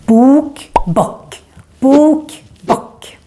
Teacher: Bok is our word for book, and here the O gets long because we're just one consonant coming after, the K. Bok. So even if this word is similar to the English one, book, it's very important that you say the O long in Swedish.